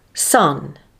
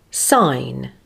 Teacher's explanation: The first word will be the monophthong and the second word will have the diphthong I.